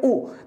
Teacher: जब भी ऊ आवाज आती है ना, तो आवाज जिह्वा के पीछे की तरफ से आती है, तो यहां पर क्या बोलेंगे, ऊ। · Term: पश्च